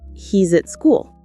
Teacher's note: Notice how at joins with school.